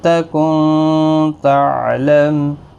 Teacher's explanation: نون ساکن کے بعد تا یہاں پر اخفاء حقیقی ہوگا، گنہ کے ساتھ پڑھیں گے، اور میم ساکن پڑھا جائے گا وقف کی صورت میں۔